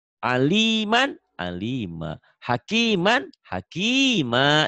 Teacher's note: Dua fathah dibaca satu jika dihentikan. Jika dihentikan, jika berhenti membaca itu mad iwad.